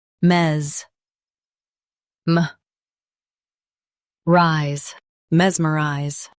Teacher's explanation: Stress mes and keep m light.